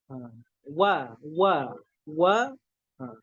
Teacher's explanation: Wawnya itu makhrajnya dari syafatain, dari kedua bibir.